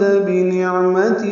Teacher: بنعمت عین ساکن پہ اظہار، میم تا جلدی ادا کریں گے